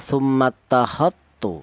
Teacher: Idgham cara bacanya tummat takatu seperti itu ya. Jadi huruf dal ini langsung diidgamkan ke huruf ta ya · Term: Idgham mutajanisen